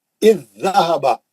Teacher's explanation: پڑھنے میں ایک زال تشدید کے ساتھ ڈبل آواز سے پڑھا جاتا ہے. اسی کو ادغام متماثلین کہتے ہیں، یعنی ایک جیسے 2 حرفوں کا ادغام، ایک جیسے 2 حرفوں کا ادغام.